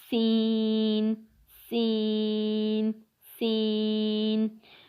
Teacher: سین کا مخرج ہے وہ زبان کی نوک اور دونوں دانتوں کے اندرونی کنارے سے تالو سے ادا ہوتا ہے